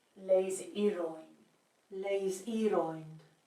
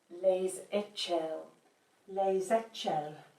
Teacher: the S is so strongly pronounced that it's probably better to think of it as a Z.